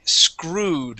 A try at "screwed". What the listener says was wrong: Give me a good R instead of screw.